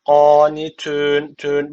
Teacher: bir Elif uzatarak durdum Neden Çünkü meddi Arız tec ortaya çıkıyor Ve hadır usulünde bir